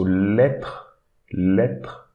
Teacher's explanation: we should not read this E, but instead we should read the TR. So lettre, lettre.